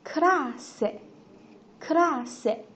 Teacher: 两个 s 放在一起的话呢，读的是轻音 s